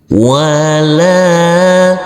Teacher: huruf lam kita baca panjang dengan panjang 2 harokat, karena huruf lam yang berfathah a ini bertemu dengan huruf alif yang tidak berharokat.